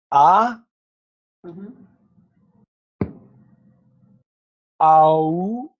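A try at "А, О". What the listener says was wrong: No, not all together. Just let's do it with the pause. A, O. But just here together. A, O.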